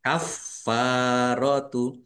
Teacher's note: Fa panjang dua harakat f-nya dibaca dobel ada tasdidnya ditekan dan ditahan biar tampak dobel.